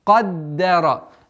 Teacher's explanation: Даль у нас мягкий звук, но она находится между двумя твердыми звуками. Каф и ра.